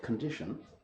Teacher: stresses on the second syllable we say it longer louder and higher than the others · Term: word stress